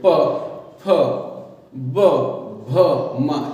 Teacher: इन्हें बोलने का तरीका होता है जैसे कि ओंठ हैं वो दोनों एक दूसरे से स्पर्श करते हैं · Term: ओष्ठ्य वर्ण